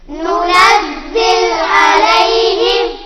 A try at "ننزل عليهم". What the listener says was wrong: لام کو ہلانا نہیں ہے، ننزل علیہم،